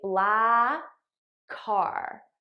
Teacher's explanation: I just eliminate one of the k sounds and I use it to link these two words together